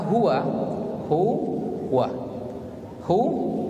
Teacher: H itu huruf ha tempat makharijul hurufnya dari mana dari pangkal tenggorokan